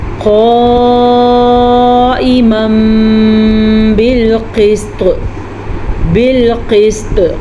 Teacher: قاف کو پر پڑھیں گے اور طوا کو بھی پر پڑھیں گے، اور طوا پہ کلکلا بھی ہو رہا ہے